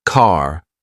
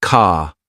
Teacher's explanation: For example, in American English, car sounds like car, while in British English, it's more like ca. It's a soft, almost invisible R sound.